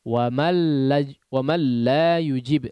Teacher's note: Wa mal la yujib mal langsung masuk kepada huruf lamnya. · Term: idgham bila gunnah